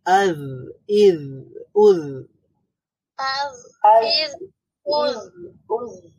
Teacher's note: জিহ্বার অগ্রভাগ উপরের দাঁতের অগ্রভাগের সাথে টাচ করবে